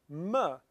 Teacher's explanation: means two lips so if we say the sound or ma we're touching our two lips together and that makes a bilabial sound